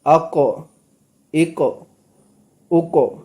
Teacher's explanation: جیسے حمزہ قاف زبر اق، حمزہ قاف زیر اق، حمزہ قاف پیش اق، اق اق اق۔ اب یہاں پر قاف جو ہے وہ ساکن حرف ہے تو یہاں پر قلقلہ ہوگا